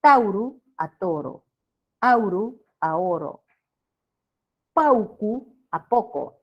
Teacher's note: el diptongo Au cambia a o